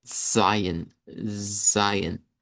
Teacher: El Zion, aquí sí noten la diferencia en el IPA que está aquí en la página que nos dice, mire, hágalo como S, pero el IPA nos dice, no, es africado CS